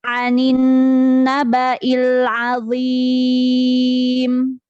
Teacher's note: Alif lam bertemu dengan huruf syamsiyah berarti ini dibacanya idgham syamsiyah